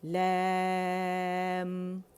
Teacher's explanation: لیم نہیں پڑھیں گے اسے، ٹھیک ہے، امالہ نہیں کرنا ہم نے